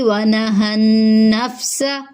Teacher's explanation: ونہى النفس، نون پہ تشدید کی وجہ سے غنہ کریں گے، آواز کو ناک میں چھپائیں گے۔ سین میں سیٹی کی آواز آئے گی